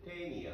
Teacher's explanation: 当然のことながらこれはニアは弱母音と強母音になりますので、ここは1音節になる 。そうするとこの発音の仕方はアクセント記号がついてないとスペイン語の発音の仕方にのっとって、後ろから2つ目の音節にアクセントがきますのでテニアになってしまうね。そうするとテニアっていうとこれ寄生虫のサナダムシって意味になる。だからこのアクセント記号の一つによって音節が分かれたりアクセントにして変わったり、もっとアクセントのことについてだったり音節のその発音のアクセントをつける部分